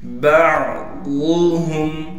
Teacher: عین کو گلے سے صاف کر کے نکالیں گے